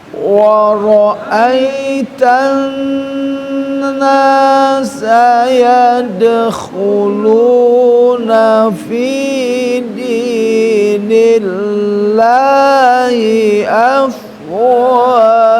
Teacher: Ini ada dengung yang nun bertasdid harus ditahan ya.